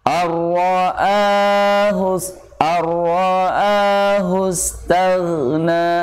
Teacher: Tag dengan cara pangkal lidahnya menaik pada langit-langit bagian belakang. Tag, nah ditarik. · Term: ditebalkan